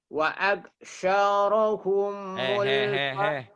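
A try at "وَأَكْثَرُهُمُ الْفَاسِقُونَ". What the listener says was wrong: Wa'ak sa-nya ujung lidah. Wa'ak saru.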